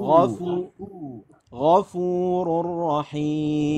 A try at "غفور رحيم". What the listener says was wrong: لا الغين هذه فيها نفس تشممها خاء. فخمت الفاء غفور